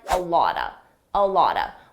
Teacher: Native speakers will combine these sounds together and it will sound like a lotta